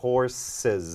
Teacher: ตัวSตอนท้ายก็จะออกเป็นZ